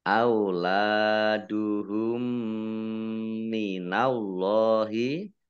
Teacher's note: Allahnya dibaca tebal karena harokat di depannya fathah.